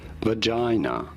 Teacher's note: You do want to stress on the second syllable, the J syllable.